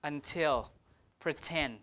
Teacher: both T's are aspirated because they are in stress syllables